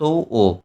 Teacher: যে স্বরধ্বনি উচ্চারণে ঠোঁট দুটি গোলাকারভাবে কুঞ্চিত হয় তাকে কুঞ্চিত স্বরধ্বনি বলা হয়